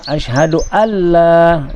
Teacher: Jadi dalam perkataan asyhadu alla, asyhadu alla, disebab dia idgham tu, nun mati tu tidak disebut, ya. Nun sukun tu tidak disebut, diterus kepada lam. Lam yang berbaris hidup itu, maka di situ sebenarnya ada tasydid.